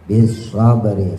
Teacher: shotnya monyongin, ada suara taswir, ada suara seperti siul burung